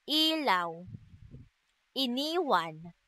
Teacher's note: At ang letrang I naman na nasa ayos ng dila na mataas at sa bahagi ng dila na harap, ito ay binibigkas na I.